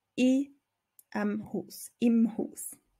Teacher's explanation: in dem Haus wird verkürzt zu i